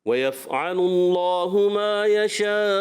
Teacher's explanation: तो आपने मद करते हुए फिर हमज़ा को करना है, ठीक है। और मद की जाती इस वजह से कि हमज़ा वाज़े करना होता है। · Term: मद्दे मुत्तसिल